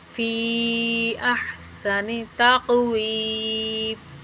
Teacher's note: فی کے اوپر جو ہے مد منفصل ہے، اس کو بھی 3 الف کے برابر کھینچ کر پڑھتے ہیں. حروف مدہ کے بعد حمزہ دوسرے کلمے میں آئے تو وہاں پر مد منفصل ہوتی ہے، ٹھیک ہے.